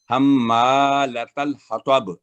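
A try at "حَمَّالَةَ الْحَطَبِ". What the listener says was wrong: तल लंबा नहीं करना, तल नहीं।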